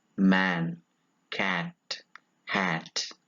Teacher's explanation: It is a low front, lax vowel.